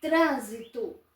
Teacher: Ela é uma palavra proparoxítona, porque ela possui 3 sílabas e a sílaba tônica é a antepenúltima. · Então, a sílaba tônica é a antepenúltima.